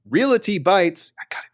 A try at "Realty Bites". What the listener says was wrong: No, it's realty, not realty. There's no vowel. There's no vowel. The L and the T.